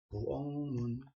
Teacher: 기억하고 미음이 만나면 기억이 뭘로 발음된다? 이응으로 발음된다. 부엌문. 끝소리 규칙. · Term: 비음화